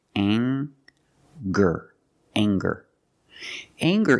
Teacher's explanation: We have the nasal sound plus the hard G, the G sound. Together, anger.